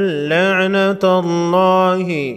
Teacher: وَأَنفُسَنَا وَأَنفُسَكُمْ، ثم میم مشدد پر غنہ ہوگا، نبتہل فنجعل، جیم اور با کو ہلا کر پڑھیں گے، ثم نبتہل فنجعل لعنت اللہ، لفظ اللہ سے پہلے حرف تا پر زبر ہے، لفظ اللہ کے لام کو موٹا پڑھیں گے